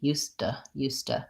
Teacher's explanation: Because we often reduce the oo into to a t, I know your question was more about the D and the T, so used to. I pretty much do a stopped D and release it into the T. Used to. And that becomes a flap T.